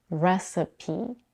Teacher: In recipe, we have a schwa in the second syllable and the high tense E in the third syllable